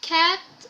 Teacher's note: The sound eh in cat is not nasalized.